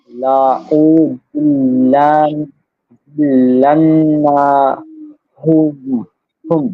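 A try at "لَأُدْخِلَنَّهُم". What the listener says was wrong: কোনো টান হবে না লা উ দিল লান না হুম লা উ দিল লান না হুম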